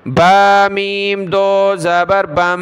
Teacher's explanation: با کو میم کے ساتھ ملایا، ناک میں آواز پیدا کریں گے